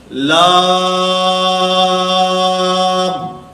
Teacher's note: لام کی ادائیگی میں آواز ناک میں نہ جائے